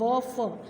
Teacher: व, फ, दंत ओष्ठ, दंतोष्ठ मीन्स दांत और होंठ दोनों की सहायता से बोले जाते हैं